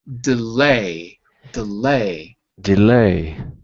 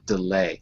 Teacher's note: we have to move the stress on the second syllable